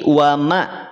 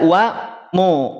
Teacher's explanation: Mim jangan sampai dibaca O. Tidak wa mallah, tidak wa mallah, tapi wa ma.